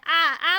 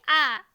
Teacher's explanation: वे स्वर है जिनके उच्चारण में मुख द्वार पूरा खुलता है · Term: विवृत स्वर